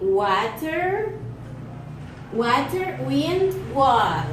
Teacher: Place of articulation is labial velar.